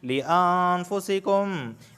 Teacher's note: نون ساکن کے بعد فا آیا ہے تو یہاں پر اخفا کا غنہ ہو رہا ہے، یعنی زبان کی نوک اوپر کے تالو سے نہیں لگے گی